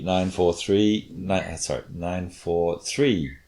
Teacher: I've probably made it louder and longer, which is not so good, but it should be 9 4 3, 9 4 3, with a rising pitch on that third one, and then we had that at the end, the last one in each group of 3, except the very last one always had a falling off intonation to mark the end of the sequence of 9. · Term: pitch accent